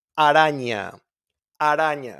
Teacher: the R, which is very soft, R, softer. We don't roll our R's in there.